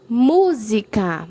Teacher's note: Mu é a sílaba mais forte, então está na antepenúltima sílaba, então é uma proparoxítona.